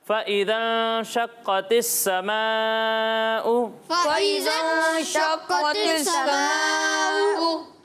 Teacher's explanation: मद्दे मुत्तसिल हो रहा है तो इसे 2 या फिर 2.5 अलिफ तक खींच कर पढ़ना है